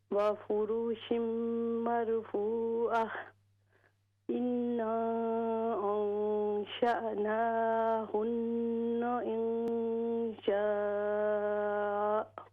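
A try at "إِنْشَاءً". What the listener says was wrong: نہیں، اس آخر میں یہ الف بن جائے گی.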